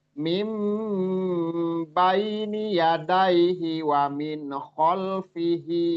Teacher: suara nun menjadi mim mim mim ditahan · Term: Iqlab